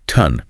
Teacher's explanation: The O does not make an A or O sound. It makes a short U sound, what linguists call a schwa.